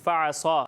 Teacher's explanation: یہاں عین کی ادائیگی واضح نہیں ہوئی، فعصا آپ نے اسے حمزہ کے مخرج سے پڑھا ہے اور صاد کو بھی آپ نے باریک پڑھا، ٹھیک ہے؟